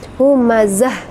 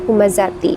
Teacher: di akhir ayat atau di waqaf maka bacaannya menjadi H ya jadi mati Humazah ya bukan humazati ya sudah selesai ayat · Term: ta marbutoh